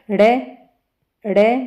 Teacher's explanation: या अंत में आई दोनों का उच्चारण स्थान समान ही है दोनों का उच्चारण स्थान तो क्या है मूर्धन्य ही है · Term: उत्क्षिप्त व्यंजनों